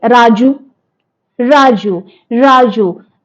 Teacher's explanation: R sound is frictionless continuant